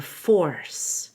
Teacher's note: make sure Force has a long o and an ER